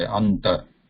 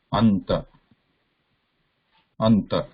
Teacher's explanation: Anuswara is pure nasal. Here we need to pronounce na, which is also nasal, but it is also a dental. Because na is also dental, right?